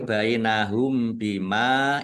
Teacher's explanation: Ini juga mim sukun bertemu dengan huruf ba. Bacaan ikhfa syafawi dibaca samar-samar bukan mendengung.